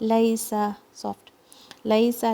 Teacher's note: आपने सीन को सॉफ्ट पढ़ना है आपने सफीर के साथ